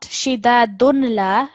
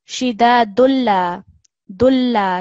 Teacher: We are merging the sound of this tanween of dhamma with the lam mushaddad.